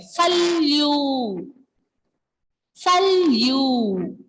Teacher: Ending letter T will be silent when you pronounce it.